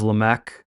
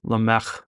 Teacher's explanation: I didn't say lamech with a hard K it's actually more of a back throw guttural sound